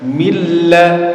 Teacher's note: Jadi nun sukunnya betul-betul masuk ke huruf lam. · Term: idgham bila gunnah